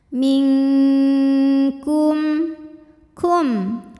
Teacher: Maka cara bacanya nun disamarkan menuju makhraj huruf kaf, yaitu menuju pangkal lidah ya, disertai bunyi dengung. Dan ini dengungnya besar karena kaf makhrajnya jauh dari nun. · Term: ikhfa hakiki, ikhfa